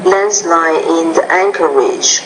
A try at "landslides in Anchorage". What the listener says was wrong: Now don't forget the blending here. Landslides in Anchorage, landslides in Anchorage. You have to pronounce that S.